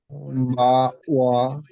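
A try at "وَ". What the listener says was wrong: ওয়া বলা যাবে না, ও ও তো হামজা হয়ে গেল। বা ওয়া, ওয়াও দিয়ে ওয়া, ও, এই আওয়াজটা যেন না আসে। পুরোটা যেন ঠোঁট থেকে আসে, এটা লক্ষ্য রাখবেন সবাই। আমার উচ্চারণটা ওয়াবের সময় ঠোঁট থেকে আসবে।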